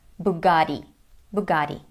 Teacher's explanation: In American English though, it sounds like Bugatti because of the American flap T, which sounds like a fast D.